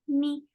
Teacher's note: For kasra, give e sound, and sound should be very light.